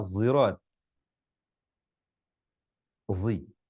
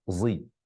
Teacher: ini hurufnya memiliki tempat sebagaimana zai, tapi dibaca tafkhim tebal